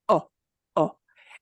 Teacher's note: in Spanish, it will never get a schwa sound.